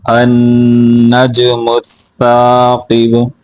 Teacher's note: جیم کے اوپر قلقلہ کرنا ہے، سا کو واضح کر کے پڑھیں گے، قاف موٹا کریں گے، با کے اوپر قلقلہ کر کے پڑھیں گے